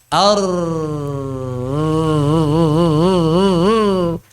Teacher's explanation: ujung lidah tersentuh langit-langit kemudian dijauhkan sedikit dan bergetar ketika bergetar itulah aliran atau laju udara mengalir di sana Ar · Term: takrir